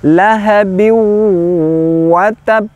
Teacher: diwaqofkan pantulannya tidak boleh buru-buru karena ditahan dulu baru qalqalahnya lahabiw watab seperti itu tidak sekedar lahabiw uh watab kurang sempurna · Nah, yang kedua adalah ba bertasjid dan diwakafkan. Nah, pantulannya tidak boleh buru-buru karena ditahan dulu baru qalqalah ya